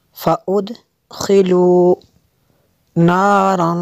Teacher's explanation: تنوین کے بعد فا ہے، حروف اخفا میں سے یہاں پہ اخفا ہوگا، اس لیے یہاں پہ غنہ کریں گے۔